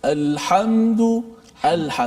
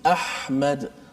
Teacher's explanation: Bila kita baca terlepas kan, tapi ramai yang baca alhamdulillah, dia tak lepas betul-betul suara kan. Maknanya huruf ha ni jenisnya terlepas suara. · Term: rakhawah